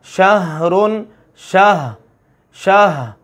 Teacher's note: اسی طرح سے ہا ہے، لیکن ہا کا چونکہ مخرج اور ہے، ہا حلق کے سینے والے حصے سے ادا ہوتی ہے، تو وہاں سے ہم نے اپنی آواز کو اور سانس کو جاری رکھنا ہے نرمی کے ساتھ۔